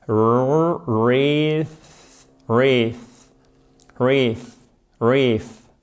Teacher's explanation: Vous commencez par un E. Ce EA se prononce comme un I long. Et ici, ça se prononce comme un TH non sonore, c'est-à-dire que vous ne faites pas vibrer les cordes vocales.